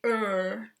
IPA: ɝ